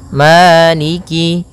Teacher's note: fathah bertemu dengan alif panjangnya dua harakat Maliki kemudian Kaf di sini ada huruf kasrahnya maka sempurnakan kafnya